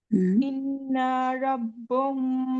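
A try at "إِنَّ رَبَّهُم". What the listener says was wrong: इन्ना, ना को लंबा ना करें, ना को ना लंबा नहीं करना, इन्ना।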